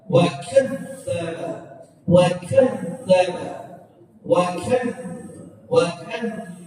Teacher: zalnya itu berharokat tasydid, maka suaranya itu berjalan. Wa kadzdzaba, wa kadzdzaba, wa kadzdzaba gitu.